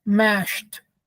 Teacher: the ed will be pronounced as t or mashed because the sh is voiceless, just as t is also voiceless.